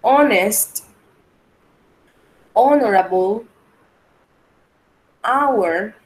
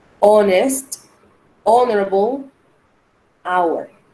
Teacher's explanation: Ninguna de estas tiene sonido como J. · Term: silent H